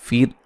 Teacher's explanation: रा साकिन से पहले ज़ेर, रा को बारीक पड़ा जाएगा।